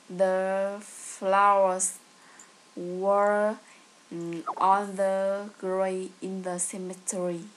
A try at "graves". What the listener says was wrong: Can you say graves? Graves, don't forget the S and V sound. The flowers were on the graves in the cemetery.